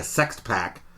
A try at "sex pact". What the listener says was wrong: Sext pact? Sex pact. threw the T in the wrong place. It just sounded like they're only going to sext each other, and it's like, we're going to do this.